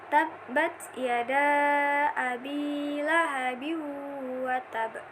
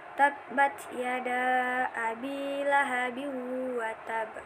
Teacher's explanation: Ba yang diharokati kasrotain bertemu dengan huruf waw. Jadi tanwin langsung dimasukkan ke huruf waw.